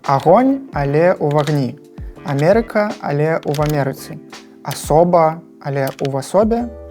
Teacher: Яшчэ дзеля мілагучнасці ўзнікае прыстаўны гук «в», калі пасля прыназоўніка «у» ідзе слова, якое пачынаецца на «а» або «о».